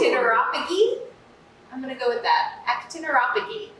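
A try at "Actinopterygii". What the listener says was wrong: Well, it's almost. I feel like you're missing a syllable, but.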